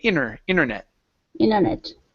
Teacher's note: so it's the same word, we just skip right over that T.